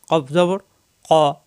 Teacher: কফের উচ্চারণ হলো জিহ্বার গোড়া থেকে